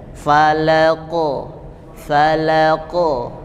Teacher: Nah, karena tebal hurufnya, jadi terdengarnya seperti o, bukan falake, tapi falaqo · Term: Qalqalahnya